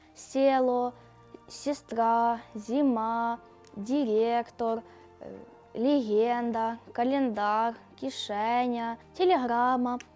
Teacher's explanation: приголосних перед е та и не пом'якшується